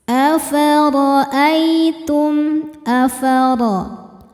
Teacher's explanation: Huruf ro dibaca secara tafkhim karena berharakat di atas yaitu harakat fathah. Cara bacanya ditebalkan. Afad ai ada huruf lin karena ada ya sukun yang sebelumnya berharakat fathah.